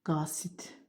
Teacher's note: Qasid sözü tələffüzdə qasit olur. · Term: kar samitlə bitir